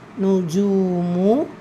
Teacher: ஜீம்ல வாவ் மத்தா இருக்கு இரண்டு ஹரக்கத் அளவு நீட்டம் கொடுத்து ஓதணும்